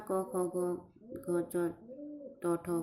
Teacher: નાદતંત્રીઓ માંથી પસાર થતી હવા ઘર્ષણ કરતી નથી અને તેથી જ નાદતંત્રીઓ નિષ્ક્રિય રહી શકે છે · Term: અઘોષ ધ્વનિ